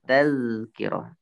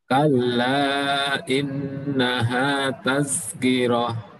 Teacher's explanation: Posisinya taz tazkirah itu lidahnya di ujung lidah itu berada di gigi seri atas ya. Gigi seri atas.